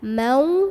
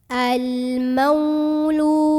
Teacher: Maka cara membunyikannya cukup dilembutkan, jadi tidak perlu panjang. Dilembutkan, mau, bibir kita ngumpul kayak mau bilang waw. Al-maulu. Lu di sini ada mad tabi'i. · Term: huruf lin